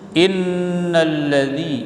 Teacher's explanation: inna nun tasydid tajibul gunnah dengung, tahan